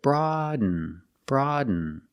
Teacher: you do a stop D you put the tongue up Broad and you fall to an N